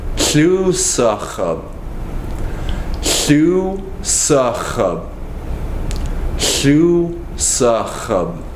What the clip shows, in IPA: łusəx̌əb